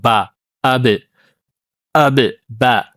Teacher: ባ የምትወጣው ከሁለት ከንፈራችን ነው። ሸፈታን ከሁለት ከንፈር ነው የምትወጣው። ቢንጢባቂሂማ ሁለቱ ከንፈር ደግሞ ምን ይደረጋሉ? ይገናኛሉ ማለት ነው። ወይ ደግሞ